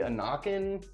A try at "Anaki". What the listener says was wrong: there's no N at the end. It's Anaki.